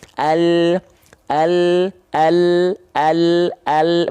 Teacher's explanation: lam itu keluar dari tepi lidah yang kiri dan yang kanan tepi lidah depan menyusur sampai ke ujung lidahnya nempel ke langit-langit